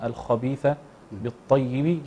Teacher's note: تفخيم الخاء نعتني به أيضا